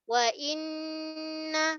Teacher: Kita tahqiqkan ataupun kita namakan dengan kita ketatkan bunyi hamzah i vokal i wa inna. Okey, nun saddu terus jaga sifat gunnah martabat yang pertama ni ada tanda saddu. Dia kita sebut dengan wajibul gunnah, wajib dengung dalam satu kalimah yang ni.